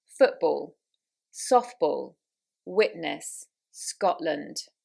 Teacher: And also we do drop our T's with a glottal stop. So in words where there should be a dropped T, where it's actually correct, such as Scotland, witness, football. They don't have a T sound in them. We skip it. It's a pause.